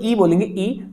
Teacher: Example के लिए जब आप इसे बोलेंगे दोस्तों ई बोलेंगे, ई तो जीभ ऊपर जा रही, छत की ओर जा रही और सामने जा रही है, ठीक है, दांत में नहीं टकरा रही लेकिन सामने जा रही है। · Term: तालु